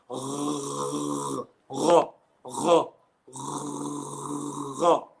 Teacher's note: the letters ghain and kha are pronounced by raising the root of the tongue in adna al-halq